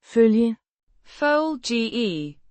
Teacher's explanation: with a more rounded vowel sound in følge, than in the English.